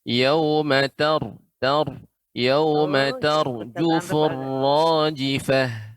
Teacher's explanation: Nah, di sini pada kata ro yang sukun sebelumnya fathah dibaca dengan tebal